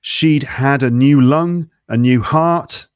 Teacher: he drops the T in the word heart